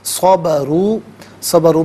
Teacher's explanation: اچھا لنجزین میں آپ دیکھیں جیم ساکن ہے، یہاں پر بھی قلقلہ ہوگا کیونکہ یہ حرف قلقلہ ہے۔ صبروا، صبروا میں را پر پیش ہے، را کو پر کر کے پڑھیں گے